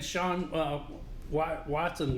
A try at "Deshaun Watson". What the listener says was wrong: Deshaun Watson. You said Sean. Sean.